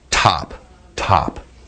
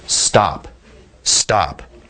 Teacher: you shouldn't feel that puff of air or not near as much air that's what linguists call on aspirated but the crucial thing about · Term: unaspirated